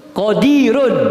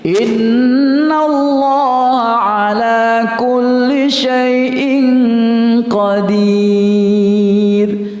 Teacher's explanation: Sebelum huruf ya mati ada huruf yang berbaris kasrah. Maka yang awalnya ro yang berbaris dhammah tadi harus dibaca tebal, tapi karena berhenti maka dia dibaca tipis.